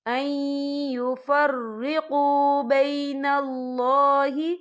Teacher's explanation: باللہ ورسولہ ویریدون ان یفرقوا بین اللہ، یہاں نون ساکن ہے، نون ساکن کے بعد جو ہے یا آ رہا ہے، اور یا جو ہے حروف یرملون میں سے ہے، تو یہاں پر ادغام ہوگا، تو ہم اسے تھوڑا سا غنّے کے ساتھ پڑھیں گے